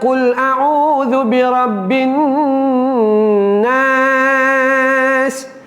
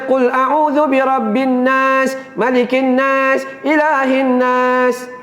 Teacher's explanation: Sebab nun itu ada sabdu. Itu dipanggil sebagai wajibul gunnah, wajib dengung.